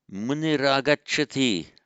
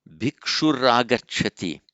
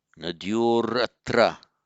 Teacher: So it's just the visarga changing to a ra before the following vowel.